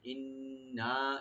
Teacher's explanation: এখানে নুন গুন্না রাখবেন, ওয়াজিব গুন্না, আর 3 আলিফ টানবেন এখানে।